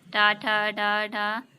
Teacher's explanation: टा से मूर्धन्य तक जितने भी हैं, टा ठा डा ढा मूर्धन्य, मूर्धा, ये जीभ से मूर्धा को टच करती है। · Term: टा वर्ग